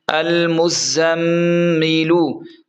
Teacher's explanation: زا کو تیز پڑھیں گے کیونکہ سیٹھی والے حروف میں سے ہے، اور میم پر غنہ کریں گے کیونکہ میم مشدد حروف میں سے ہے۔